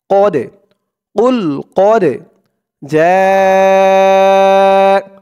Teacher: আওয়াজটা গলার ভেতর থেকে ধাক্কা খেয়ে বের হবে কুল কদে কদে এই দালটা হচ্ছে কল কলার হরফ ধাক্কা দিয়ে পড়তে হবে